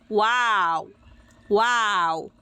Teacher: উভয় ঠোঁটকে না মিলিয়ে অর্থাৎ গোল করে উচ্চারিত হবে ওয়াও ওয়াও।